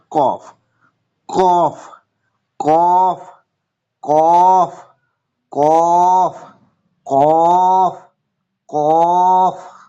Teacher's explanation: জিভের গোড়া বা তার বরাবর উপরের তালুর সাথে লাগিয়ে উচ্চারিত হয়